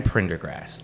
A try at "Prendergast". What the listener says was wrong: There's only one R.